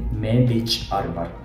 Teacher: Ch is ejective sound, so you have to hold your ear pressure in your throat and produce a sound instantaneously.